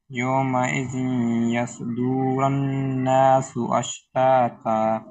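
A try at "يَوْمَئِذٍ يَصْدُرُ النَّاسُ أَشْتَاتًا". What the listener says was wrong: यौमइज़िन यस्दुरुन रा पर पेश को लंबा नहीं करेंगे दाल पर पेश को लंबा नहीं करेंगे यौमइज़िन यस्दुरुन्नासु अश्तातन लियुरौ अश्तातन लियुरौ जी पढ़ें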